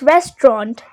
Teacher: In British English, you might hear just 2 syllables, which is restaurant. That is also correct.